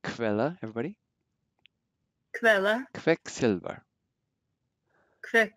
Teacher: Then QU sounds like a KV.